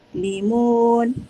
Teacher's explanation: mad arid disukun dibaca 2, 4 ataupun 6 harakat